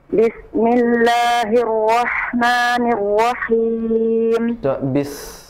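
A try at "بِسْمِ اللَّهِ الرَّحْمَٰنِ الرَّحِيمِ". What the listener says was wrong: Bisnya sama seperti roh. Yang kedua tidak ada tasdid, tidak nirrahim. Ha yang kedua tidak ada tasdid ya. Nirrahim, langsung.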